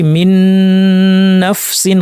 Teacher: ইদগাম যেগুলো হচ্ছে গুন্না সহ ইদগাম যেমন মিন নাফসিন এখানে আমরা নুন সাকিনের সাথে নুনকে ইদগাম করেছি এবং গুন্না করে বলেছি · আমরা দুইটা নুন না পড়ে তাসদিদ যুক্ত একটি নুন পড়েছি যদি দুইটা নুন পড়তাম আমরা বলতাম মিন নাফসিন মিন নাফসিন এভাবে